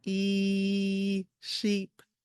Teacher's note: your tongue is higher in your mouth, especially towards the back. It's it's higher up and the sound is held longer just like it says long e